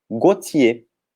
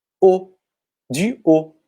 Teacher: O T não é pronunciado no final, então fica só um som de O.